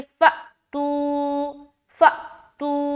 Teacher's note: पहले झटका दिया फिर तू में वाव मद्दा कर रहे, ठीक है। तो यहाँ पर हम खींचेंगे, तो पूरा यहाँ तक देखें, निसाउकुम हर्सुल लकुम फ़अतू, ठीक है।